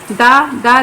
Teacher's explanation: दा दंत है, स्पर्श है, घोष है, अल्प प्राण है।